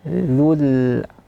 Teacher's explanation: Dzul arsyil majid, setelahnya dzu juga tipiskan. Dzu ucapkan di makhraj dzal. Dzul tipis.